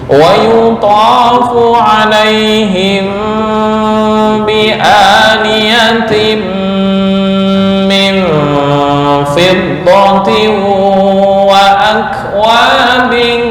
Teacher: mim mati bertemu ba, bacaan ikhfa syafawi, dengung ditahan, jangan buru-buru.